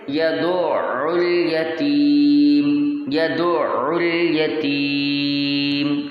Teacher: دال کو پہلے عین سے ملانا ہے اور پھر عین کو لام سے ملانا ہے، پھر پڑھنا ہے اور تھوڑا سا اس میں ٹھہراؤ لانا ہے، جیسے کہ یدع الیتیم، یدع الیتیم۔